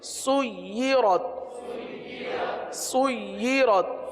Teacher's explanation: یا پر تشدید ہے لہذا یا کو رک کر پڑھیں گے